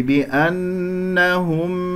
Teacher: الميم مظهرة كما سمعتموها، لا تجعل صوت الميم يختفي